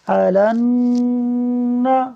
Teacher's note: نون مشدد ہے تو اس یہاں پر غنہ ہوگا، اس لیے ہم ایک الف کے برابر آواز کو ناک میں رکھیں گے۔